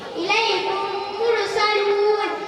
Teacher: মিম সাকিনের পর মিম আছে মিম সাকিনের গুণা ও ইকফার সাথে পড়তে হবে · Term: ইদগামে নাকিস